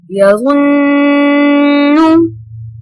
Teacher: تو یہ نون مشدد ہوا تو ہم اس کو غنہ کریں گے